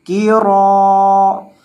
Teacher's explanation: بعد کسی قسم کی مد نہیں ہے، را زبر الف را، را کو لمبا کریں گے کیونکہ را کے بعد الف مدہ ہے